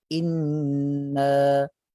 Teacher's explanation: nun yang bertasydid nak katakan gunnah yang sempurna dengan kadar 2 harakat.